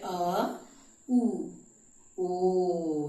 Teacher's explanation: ओ और औ का उच्चारण स्थान कंठ और ओष्ठ दोनों है। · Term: कंठोष्ठ